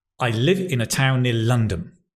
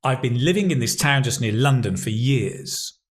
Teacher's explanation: the stress is in the same place even though the second sentence has many more syllables? And that's what makes English a stress-timed language, more or less, generally speaking.